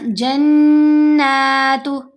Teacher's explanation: نون پر غنہ بھی کیا، نون کو لمبا بھی کیا